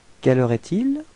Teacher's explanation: as it's a question, it would be better to raise your voice at the end of the sentence